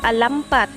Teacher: penultimate stress, placed on the penultimate syllable